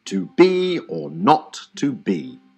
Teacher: the first syllable is unstressed and the second is stressed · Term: iamb